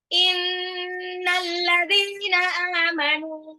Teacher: Inna itu ditahan gunnah ya. Innal ladzina dhalnya matabi'i 2 harokat.